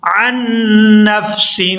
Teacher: یہاں عین کو نون مشدد کے ساتھ ملائیں گے تو غنہ کریں گے